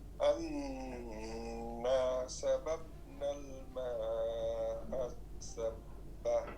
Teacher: اس الف ساکن کا مطلب یہ ہوتا ہے کہ پہلا جو حرف ہے اس کو لمبا کرنا ہے الف ساکن کی وجہ سے، کیونکہ الف ساکن یہ حروف مدہ کہلاتا ہے، ٹھیک ہے؟